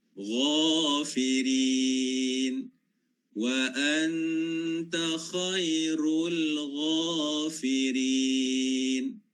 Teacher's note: Ghain sifatnya adalah isti'la.